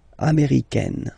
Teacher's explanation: it's really open, this A-I.